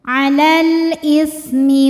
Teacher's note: alif lam menghadapi huruf qamariah yaitu Hamzah maka lam sukun dibaca jelas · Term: alif lam qamariah